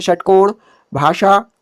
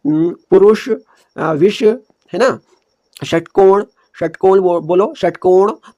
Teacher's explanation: षटकोण में क्या हो रहा है, हमारी जो जीभ हो रही है ऊपर मूर्धा को टच कर रही है घूमकर, यानी हमारी जो जीभ हो रही है मुड़ जा रही है, जीभ की नोक मुड़कर मूर्धा को टच कर रही है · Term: मूर्धन्य सौ